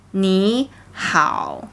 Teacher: The second character, the hao, should be starting low instead of high.